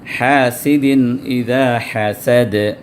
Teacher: تنوین کے بعد حمزہ آیا، تو حمزہ حروف حلقی میں سے، حروف اظہار میں سے ہے، تو یہاں پر تنوین کو ظاہر کر کے پڑھیں گے